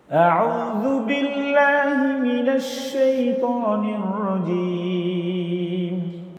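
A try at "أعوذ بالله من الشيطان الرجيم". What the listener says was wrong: হে না হি, হি বলো, হি,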